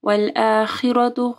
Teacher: خا ہیوی پڑھی جائے گی اور رو بھی ہیوی پڑھی جائے گی، رو کے اوپر زبر ہے۔